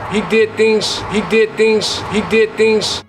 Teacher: With devoicing, we use the voiceless equivalent, which is an S. So the Z sounds at the end of words turn into more of an S sound.